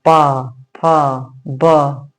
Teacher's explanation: इन वर्णों का उच्चारण ओष्ठ से होता है। इसलिए इन्हें ओष्ठ वर्ण कहा जाता है।